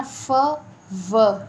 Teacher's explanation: labio dental sound fricative होंगी फ एंड व